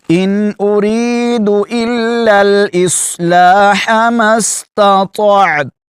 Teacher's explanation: تا کو باریک پڑھیں گے اور تو کو پر کر کے یعنی موٹا کر کے پڑھیں گے ، تا پر وقف کرتے ہوئے اس کو پڑھیں گے ضرور